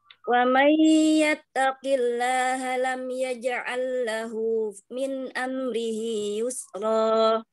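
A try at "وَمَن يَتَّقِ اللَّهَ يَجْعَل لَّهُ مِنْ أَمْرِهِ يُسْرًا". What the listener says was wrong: Wa may yattaqillaha yaj'al lahu. Kalau lam malah tidak jadi dong. Oke, diulang.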